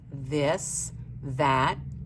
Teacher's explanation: But when you say the words this, that, those, the, and the TH says th, your voice box is turned on and you can feel the vibration.